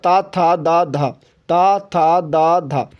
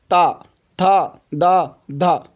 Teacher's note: दांत पर जब जीभ लगती है तो वहाँ पर उच्चारण स्थान हो जाएगा दंत